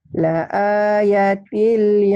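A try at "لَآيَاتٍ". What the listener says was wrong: A-nya panjang juga. La ayatil laayatin liqaumin yatafakkarun.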